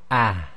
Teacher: So we don't need to go ha, he, and very deep there. It's more, the deeper chesty sound is really more emphasized when the ha itself is sakin. Otherwise you can just relax and say the ha quite normally like you do in English, with a tiny bit more emphasis on the chest.